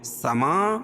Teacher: سما یہ دو ایک ہی کلمہ ہے تو یہاں مد متصل ہوگا، اس میں طول ہے